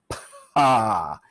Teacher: If you really exaggerate it, pa, you get a long delay after you release the lips and the voicing starts happening. The vocal cords start vibrating.